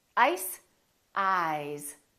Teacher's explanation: this s is actually pronounced as a z sound this is actually z z this is voiced and S this